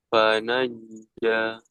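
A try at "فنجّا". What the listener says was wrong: Ah, hati-hati jangan seperti C ya. Ca, ca, ca. Hampir ke C. Ja, ja. Jadi kuat. Ja, ja. Me- Bergetar gitu lah.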